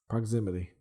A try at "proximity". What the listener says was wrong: You have to enunciate it with like a CKS, not a GGZ.